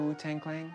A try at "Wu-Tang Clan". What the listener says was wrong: Clan. There's no G. Wu-Tang Clan.